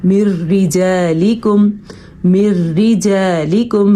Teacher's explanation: را باریک کیونکہ را کے نیچے زیر ہے